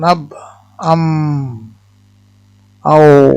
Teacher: 16 নম্বর হলো দুই ঠোঁট, এখান থেকে উচ্চারিত হয় তিনটি হরফ, যথা হলো বা, মিম, ওয়াও, এটা উচ্চারণ হয় আব, আম, আও, দুই ঠোঁট।